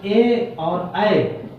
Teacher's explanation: ए और ऐ का उच्चारण स्थान क्या हो गया, कंठ और तालु से होता है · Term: कंठ तालु